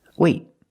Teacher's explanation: I stop the air. I stop the air with my tongue in the T position.